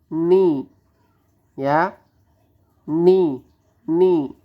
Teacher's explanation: Ayun caranya berarti [Musik] bismillahirrahman begitu ninya nunnya berkasrh ni yaitu Nun cara pelafatannya ujung lidah bertemu dengan gusi atas